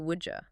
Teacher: Would you contracts to would you that D and Y merge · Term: D plus Y sound